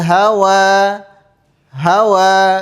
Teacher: Apa itu mad thabi'i? ketika ada fathah bertemu dengan alif ya alhawa panjangnya dua harakat saja tidak boleh lebih dari dua